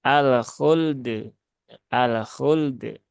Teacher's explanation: itu berarti dia lamnya yang mantul ya lamnya yang ada qalqalahnya padahal lam tidak ada Qalqalah dan qalqalahnya itu justru ada di huruf dalnya